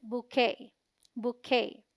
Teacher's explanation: BOU sounds like boo, rhyming with shoe. QUET is the stressed syllable and sounds like K, rhyming with day. T is silent.